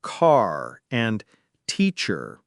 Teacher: In many accents like American English, the R is pronounced at the end of words like car and teacher. In British English, it's often silent unless it's followed by a vowel sound.